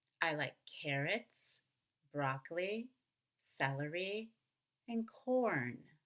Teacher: before we go up on each of the initial items you need to go down and on the very last item of course you'll go up before you go down · You want to go up on each item in the list to show, look, I'm not done with my list, but then on the very last item, we'll come down. Of course, before we go up on each of the initial items, you need to go down. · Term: items in a list